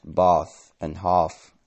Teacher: in southern England, more words from short A lengthen to this phoneme, such as bath or half, now pronounced bath and half in southern England. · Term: trap-bath split